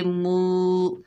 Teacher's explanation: मीम के ऊपर पेश है, आगे वाव साकिन है, मीम को वाव साकिना से मिलाएंगे, ये वाव मद्दा है, एक अलिफ की मिकदार खींचकर पढ़ेंगे। मू। सीन के ऊपर ज़बर है, आगे लाम साकिन है, सीन को लाम साकिन से मिलाएंगे, बीच में हमज़तुल वसल हज़फ हो जाएगा और या जो लिखी हुई आई है ये पढ़ी नहीं जाएगी, ठीक है, ये इस्तेमाल में नहीं है क्योंकि इसके ऊपर कोई अराब नहीं है।